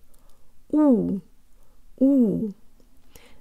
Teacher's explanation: The jaw is slightly forward, the lips are way further out than in English, and the tongue is very low in the mouth, making a sort of cup shape. U, U. Then we relax only the lips, leaving the tongue where it was. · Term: real Russian U